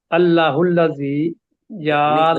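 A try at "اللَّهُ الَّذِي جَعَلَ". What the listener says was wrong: اللہ الذی، لمبا کریں تھوڑا سا، اللہ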